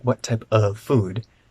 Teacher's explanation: the f is really actually a little longer